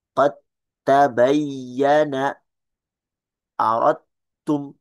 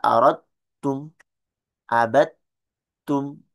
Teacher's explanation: Soalnya dalnya kayak nggak ada dalnya, langsung masukin ke ta. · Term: idgham mutajanisain